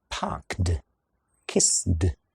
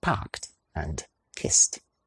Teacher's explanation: We end it with a “t” sound; a “t” does not use the voicebox, it is not voiced